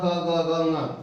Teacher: क वर्ग का उच्चारण कंठ से होता है